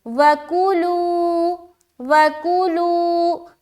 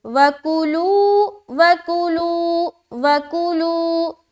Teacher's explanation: واو اور کاف کو بالکل جلد ادا کرنا ہے، لو میں کھینچنا ہے